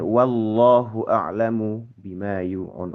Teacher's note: lafal jalalah Allah ini itu di memang dibaca tebal gitu ya karena sebab sebelumnya memang ada fathah dari huruf wawu. Nah, maka nanti karena fathah huruf sebelumnya maka lafaz jalannya nanti jadi tebal.